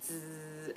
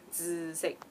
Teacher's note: So it's a very like TZ kind of sound, 紫, and a bit nasal, 紫, you know, 紫色. So it's a very low tone, definitely, and it's a straight low tone.